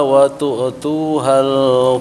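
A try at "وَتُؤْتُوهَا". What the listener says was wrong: Dan untuk hamzah itu tu tadi kedengaran agak mantul ya. Dia tidak mengalir wa tu jangan tu nya ditahan.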